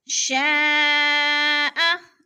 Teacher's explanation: مد متصل 4 الفی مد ہے، 4 الف کے برابر ہم نے اس کو کھینچ کر پڑھنا ہے